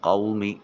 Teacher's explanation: واو لین ہوگا، نرمی سے ادا کرتے ہوئے ایک الف کے قائم مقام لمبا کریں گے۔ یہ قو نہیں کریں گے۔